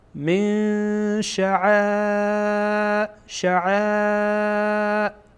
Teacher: بعد از نون ساکن در اینجا شین آمده و شین از حروف اخفا هست، بنابراین اخفا میکنیم